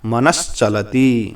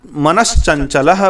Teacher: इसे जब भी संधि कार्य करेंगे तो दंत स्थानीय सकार बदल जाएगा और उसके स्थान पर आएगा तालु स्थानीय या तालव्य सकार और बनेगा मनस चलती।